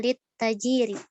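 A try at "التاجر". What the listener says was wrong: Ta panjang.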